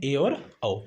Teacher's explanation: इनके उच्चारण में मुख द्वार लगभग आधा बंद रहता है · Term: अर्धसंवृत